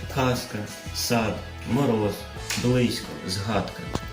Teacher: дзвінки приголосні всередині слова або в кінці ледь помітно оглушується